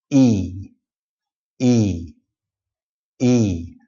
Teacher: It's not E. It's not sharp. It's not short. It's very long.